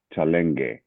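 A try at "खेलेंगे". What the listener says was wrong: It's kha.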